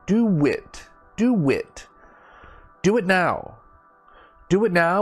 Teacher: we add like a w sound · so you see my mouth is actually making a w sound